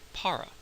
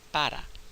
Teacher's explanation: If you hear a native Spanish speaker saying the word, you'll hear them say something closer to para with an unaspirated P. Notice the aspiration's not there.